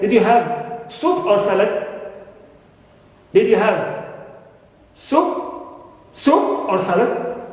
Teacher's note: the pitch of the voice starts a little bit relatively low. It moves then upward, then downward again. Okay, upward, then downward again. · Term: rise, fall intonation